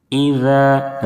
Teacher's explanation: ذال کی ادائیگی میں زا کی طرح سیٹی جیسی آواز نہ نکلے